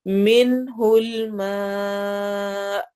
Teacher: روجو را کو موٹا پڑھیں گے ضمہ کی وجہ سے. منہ الماء، من میں نون ساکن اور اس کے بعد ہا آ رہا ہے تو یہاں پہ اظہار ہوگا